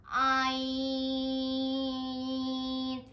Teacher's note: आइन भी हलक के दरमियान वाले हिस्से से अदा होते हैं · जो आइन होता है उसे हम 6 अलिफ के बराबर लंबा करते हैं